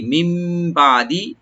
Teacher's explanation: মিম বাদি, মিম বাদি থেকে পরে, বাদ মানে পরে, মিম এখানে নুন সাইন বলতে বাড়ছে, এখানে আমরা একলাপ করবো গুন্না সহকারে, আনি নুনটা মিমের সাথে চেঞ্জ হয়ে গুন্না সহকারে পড়বো আমরা